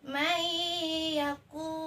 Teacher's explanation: Nun mati bertemu dengan huruf ya. Jadi harus digunnahkan. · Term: idgham bi gunnah